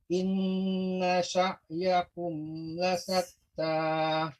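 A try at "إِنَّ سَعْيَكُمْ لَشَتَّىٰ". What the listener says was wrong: Nah, ini huruf shin. La syatta.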